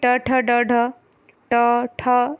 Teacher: आप देखिए कि जब आप ट ठ ड ढ बोलते हो तो ये मुड़ता है, तो इसलिए इसकी वजह से ये मूर्धन्य है